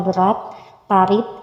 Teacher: konsonan hambat itu dapat dilaksanakan dengan tidak ada letusan, maka hambat itu bersifat implosif